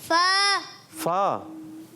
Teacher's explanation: فا اوپر کے دانتوں کے کنارے جب نیچے والے ہونٹ کے تر حصے سے لگتے ہیں تو ادا ہوتا ہے